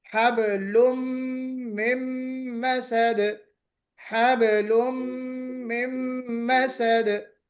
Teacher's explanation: तो तनवीन भी मर्ज होती है और नून भी मर्ज होता है।